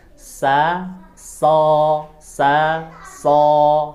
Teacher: ketika mengucap huruf so itu pangkal lidah yang dinaikkan